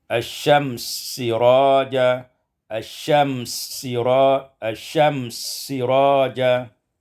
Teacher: asyamsa siraja, idghamus sin fis sin, diidghamkan sin pada sin menjadi asyams siraja, asyams siraja.